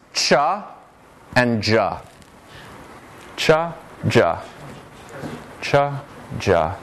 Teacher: of the tongue to the alveolar Ridge or right behind it making a stop like a top or a duh and then releasing it to a fricative · the to articulate errs parts slightly to make a fricative okay affricates a stop fricative pair all in one articulation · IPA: [ʧ]